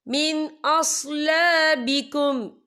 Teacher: یہ دیکھیں من، یہاں نون ساکن ہے، نون ساکن کے بعد جو ہے حمزہ آ رہا ہے اور حمزہ جو ہے حروف ہلکی کا ورڈ ہے، تو ہم یہاں اظہار کریں گے، ہم اسے بنا غننے کے پڑھیں گے